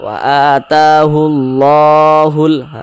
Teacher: Karena di atas lafaz Allah itu ada tanda baca fathah berdiri nih, sehingganya lafaz Allah ini dibaca tebal. Mad tabi'i panjangnya 2 harokat.